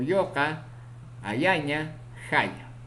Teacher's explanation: Consonante ya, semiconsonante palatal sonoro ocurre en posición inicial, medial y final.